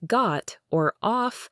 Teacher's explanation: some British accents might employ a shorter, more rounded O sound